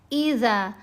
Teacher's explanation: زال کو نرمی سے پڑھیں، زبان اپنی دانتوں کے درمیان میں رکھ کر اگر اس کو ادا کریں گے تو یہ آواز زیادہ بہتر پیدا ہوگی۔ اذا فتحت، تا کو ساکن کریں گے، تا ساکن ہے، کریں گے نہیں، پہلے ہی ساکن ہے، ہم نے اس کو کمزور کر کے پڑھنا ہے۔